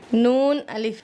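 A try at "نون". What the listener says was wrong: नून के ऊपर 1 नुक्ता होता है, 2 नुक्ते हैं यहाँ ऊपर, क्या बनेगा?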